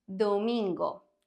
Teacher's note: the second D is softer because it is between vowels so when the D is between vowels it's going to have